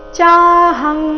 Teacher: ಚಾಹಂ ಇಲ್ಲಿ ಅನುಸ್ವಾರದ ಉಚ್ಚಾರಣೆ ಕ ವರ್ಗದ ಅನುನಾಸಿಕದ ರೀತಿ